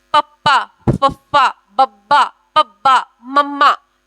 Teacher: ਜਿਨ੍ਹਾਂ ਦਾ ਉਚਾਰਨ ਕਰਨ ਸਮੇਂ ਐਕਟੀਵਿਟੀ ਸਾਡੇ ਹੋਠਾਂ ਦੇ ਉੱਤੇ ਆਵੇ ਉਸਨੂੰ ਦੋ ਹੋਠੀ ਵਿਅੰਜਨ ਕਿਹਾ ਜਾਂਦਾ ਹੈ।